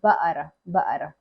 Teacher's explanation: They don't pronounce the kaf, they make it ba'ara.